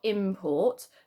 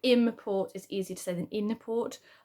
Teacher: im is an assimilation of in, meaning coming in, but because it's changed to an M because it's followed by a P